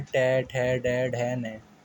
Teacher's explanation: मूर्धन्य व्यंजन जिन वर्णों का उच्चारण मूर्धा से होता है, जो हमारे दांत के ऊपर वाला हिस्सा है वहाँ से होता है, ट, ठ, ड, ढ, न।